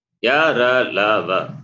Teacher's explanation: The four semi vowels, they are alpa pranaha, non-aspirate, and they are soft. Therefore, soft consonants.